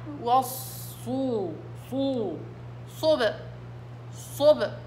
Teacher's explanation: والصاد مطبقة بأضغط الصوت في الصاد